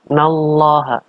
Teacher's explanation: Ini adalah lam jalalah dibaca dengan tafkhim, artinya dibaca dengan tebal.